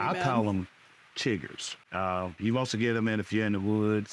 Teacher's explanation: the vowels are pronounced kind of long and sound like they're split into two syllables